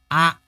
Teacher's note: Harus sempurna. Fathah diucapkan dengan membuka mulut secara tegak, sempurna, bunyinya A. Jangan sampai miring jadi E.